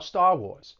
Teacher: that phrase, Star Wars, dropping the R's in both of those words